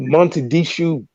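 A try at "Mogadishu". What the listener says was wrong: Did you say Montedishu? With an N? Did you say it with an N and a T? No, it's Montedishu with a G. The G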